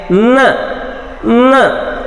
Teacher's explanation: ನೀವು ಮೂಗ್ ಕ್ಲೋಸ್ ಮಾಡ್ಕೊಂಡ್ರೆ ಆ ಸೌಂಡ್ಸ್ ಅನ್ನಲಿಕ್ಕೆ ಬರಲ್ಲ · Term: ನೇಸಲ್ ಸೌಂಡ್ಸ್